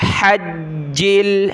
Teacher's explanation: جیم کے اوپر یہ تشدید ہے، اس وجہ سے ہم نے جیم کو سختی کے ساتھ پڑھنا ہے. حجل ہا کو گلے سے نکالیں.